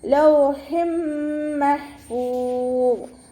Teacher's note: ഹ തൊണ്ടയുടെ മധ്യഭാഗത്തു നിന്നാണ് വരുന്നത്.